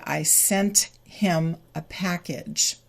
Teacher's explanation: in this case the final T is not deleted